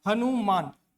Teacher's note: आपका जो पूरा जोर है ना, ये आ की मात्रा में आ रही है और इसी कारण न का जोर कम हो जा रहा है। न को हम पूरा उच्चारण नहीं कर पा रहे हैं, इसलिए न के नीचे हलंत।